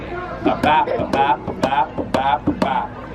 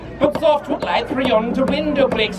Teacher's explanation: there are 10 syllables per line that alternate between an unstressed and a stressed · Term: iambic pentameter